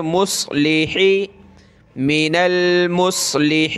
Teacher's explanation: من المس، صاد کو موٹا کریں